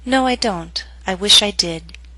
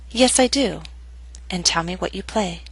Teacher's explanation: Both will be read with falling intonation.